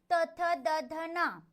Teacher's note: यांचा उच्चार करताना दाताचा विशेष उपयोग होतो. जिभेचा शेंडा दाताच्या मागे लागतो, बरोबर. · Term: दंत्य व्यंजने